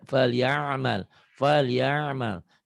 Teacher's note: Jadi nggak menggunakan hidung sebetulnya. Karena ini adanya huruf tenggorokan, huruf halki.